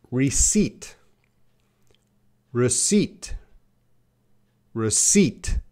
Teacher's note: That P is silent. So we should say receipt.